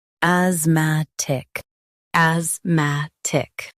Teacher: Emphasize mat and keep ic light.